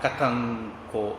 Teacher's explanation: அந்த அனுஸ்வாரம் இங்கா மாறு, கதங்கோ அப்படின்னு மாறும்